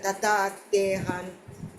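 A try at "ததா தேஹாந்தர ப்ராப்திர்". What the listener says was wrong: தத்தா தத்தா தேகாந்தர பிராப்திர். தத்தா அது வந்து நெடில். தே அதுவும் திருப்பி நெடில். அது தே அல்ல தே. தேகம் அப்படின்றல தே. ஹா அகெயின் அதுவும் நெடில். தேஹா த திருப்பி குறியில் வருது. தேகாந்தர பிராப்திர். அதை நீங்க வேணா பிரிச்சுக்கலாம். தேகாந்தர பிராப்திர் அப்படின்னு பிரிச்சுக்கலாம். தேஹா அந்தர பிரிச்சுக்கலாம்.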